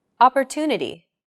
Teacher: The stressed syllable to in opportunity is deemed more important, so it's pronounced longer than all other syllables.